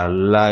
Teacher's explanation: மேல்வாயை நாக்கின் ஓரங்கள் தடித்து தடவுவதால் பிறக்கிறது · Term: பெரிய லகரம்